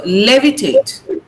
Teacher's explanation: The stress is on lay. So levitate. Now tate should not be prominent.